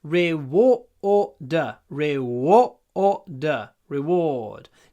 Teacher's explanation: don't pronounce the r at the end